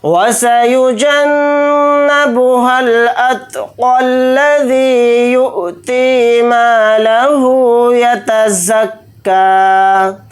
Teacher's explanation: اگر یہاں پر ہم آیت نہیں کرتے ہیں تو پھر قاف کو ڈائریکٹ لام کے ساتھ ملا کر پڑھیں گے، لام پر تشدید ہونے کی وجہ سے